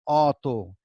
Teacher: আবার যখন লিখছি অ ত রস্বইকার তখন কিন্তু আমরা অতি বলছি না, আমরা কি বলছি অতি। এই অ দিয়ে লিখছি ঠিকই, কিন্তু আমাদের উচ্চারণ হচ্ছে ও, ওর মতো।